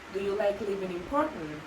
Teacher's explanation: So intonation has two different patterns, which are the rising and the falling. So with rising intonation, you have to raise strictly the pitch at the end of the sentence, whereas with falling intonation, you go down a bit.